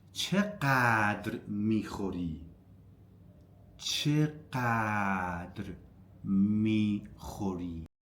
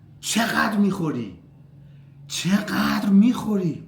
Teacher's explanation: So, stress is on چقدر on the first syllable.